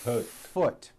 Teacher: do you see how long I'm holding that F